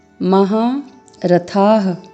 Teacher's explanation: थ के साथ दीर्घ स्वर और विसर्ग है। तो यहाँ पर ह का उच्चारण करना है।